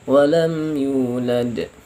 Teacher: karena di akhir mati, ya, mati asli dan di akhir, tidak terletak sesudah mad, jadi cukup saja memantulkannya, tidak terlalu kuat. Walam yulad, nah, ringan, lebih ringan dari ini, ya. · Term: qalqalah kubra